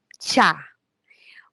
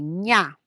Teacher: la zona del paladar donde se va a producir un sonido como ya un sonido como ña son sonidos palatales